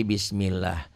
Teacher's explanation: cara membaca lafaz Allah lafaz Allahnya dibaca tipis